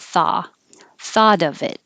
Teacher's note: the vowel ah so open a lot